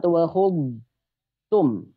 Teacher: Nah, maka ketika seperti ini maka jangan sampai terbaca seperti ta tasdid ya. Jadi huruf dhad tidak boleh idgham ke huruf ta.